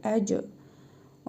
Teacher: Ə, cim hərfidir. Üzərində cəzm var. Qalqalə edərək oxuyuruq.